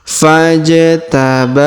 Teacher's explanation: Huruf ba kita panjangkan 2 harokat karena terdapat alif kecil di atasnya.